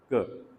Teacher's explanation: soft palate और जो back of the tongue है वो आपस में मिल जाते हैं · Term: velar sound